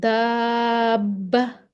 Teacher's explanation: دابہ با پہ شد ہے تو ہم نے اس کو دا کو لمبا کر دیا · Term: تشدید